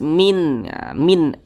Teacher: karena dia izhar maka dibaca jelas tidak berdengung Apanya yang dibaca jelas jadi huruf nunnya ini dibaca jelas Min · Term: izhar halqi